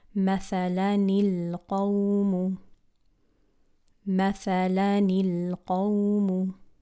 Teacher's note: So if the reader doesn't know the rule, they would pronounce it with a noon kasra going into a lam sukoon, and they would say مثلا القوم.